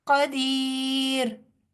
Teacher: रॉ जो है यहाँ पुर नहीं होगा, इसकी वजह ये है कि इससे पहले वाला हरफ जज़म और उससे पिछले वाले हरफ के नीचे ज़ेर है, इसलिए रॉ जो है वो बारीक पढ़ा जाएगा, और रॉ के ऊपर की कोई भी हरकत जो है वो हम जज़म दे देंगे, नहीं पढ़ेंगे, क्योंकि यहाँ हम वक्फ कर रहे हैं।